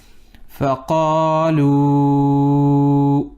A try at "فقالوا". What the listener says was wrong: Make your qaf more heavy. فقالوا. Don't say fa. Flat.